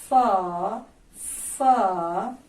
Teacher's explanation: چونکہ یہ 4 حروف ہونٹوں سے ادا ہوں گے، ان میں بھی تھوڑے تھوڑے فرق کے ساتھ ہونٹوں سے ادا ہوں گے. مثلا فا جو ہے وہ اوپر کے 2 دانت نچلے ہونٹ کے اندرونی حصے سے ٹچ ہوں گے تو فا ادا ہوگا